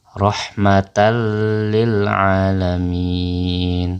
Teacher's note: tanwin tersebut kita lebur ke dalam huruf lam lam nya menjadi bertasydid atau double